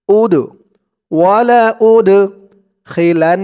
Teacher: দালটা হচ্ছে কলকলার হরফ, ধাক্কা দিয়ে পড়তে হবে। উদ ওয়ালা উদ খিলান, খিলান ওয়াজিব গুন্নাহ।